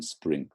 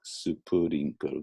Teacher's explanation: Because in Japanese you tend to have everything, just about all the consonant sounds are followed by a kind of vowel sound, right? So you have like a su, pu, and then spring, supurinko, more like that, right?